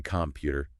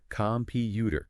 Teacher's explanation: You might hear some learners say computer, stressing the first part. But native speakers, they usually go computer, stress on the second syllable.